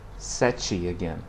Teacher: Okay, but also sometimes it's not marked like in the words mea or menos. Okay, when the e is in final position, the sound changes and it sounds more like a y in English